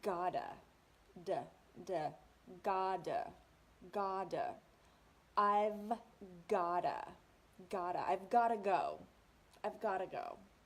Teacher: the got to are linked together like one word gotta and that T sound in English in American English sounds more like a D some people call it a flap T